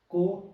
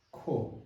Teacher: the difference is ko no aspiration ko second one kho aspirate kho